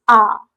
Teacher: आ बोलते समय हमारा मुख द्वार पूरा खुल रहा है ना, आ, ठीक। तो ये हो गया हमारा विवृत स्वर, मतलब ऐसे स्वर जिनके उच्चारण के समय हमारा मुख द्वार पूरा खुले, लगभग पूरा खुले, ठीक।